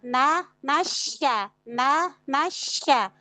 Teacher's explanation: sempurnakan fathah pada na baru masuk ke syin tasydid